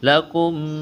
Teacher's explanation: میم ساکن کے بعد میم مشدد ہے، میم کا میم میں ادغام کریں گے، غنہ کریں گے